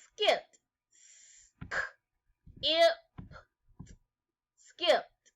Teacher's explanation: That's right, the p sound is unvoiced. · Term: t sound